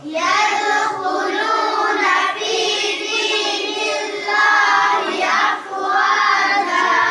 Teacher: یہاں دیکھیے فی دین اللہ، یہاں اللہ کے نام سے پہلے زیر ہے تو اس اللہ کے نام کو ہم باریک پڑھ رہے ہیں